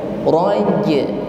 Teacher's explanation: huruf jim yang berharokat sukun, maka nampak di sini bunyi pantulan atau sifat qalqalah